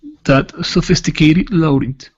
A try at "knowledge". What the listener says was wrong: okay now that that word is instead of noge it's n knowledge knowledge